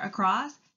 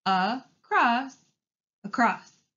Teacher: has the schwa sound spelled with an A, which you hear in the first syllable